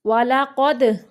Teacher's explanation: دال کو قلقلہ کرنا ہے